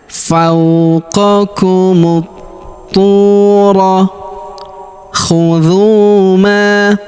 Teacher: huruf mu langsung sambung ke huruf tu yang berharakat tasydid. Alif dan lamnya tidak dibaca. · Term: Alif lam syamsiyah